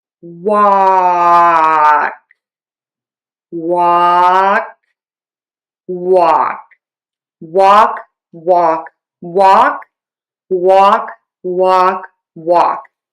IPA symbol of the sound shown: wɔk